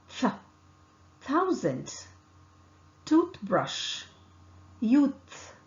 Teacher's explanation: tip of the tongue close to the upper front teeth the air escapes between the upper front teeth and tip of the tongue here the vocal cord does not vibrate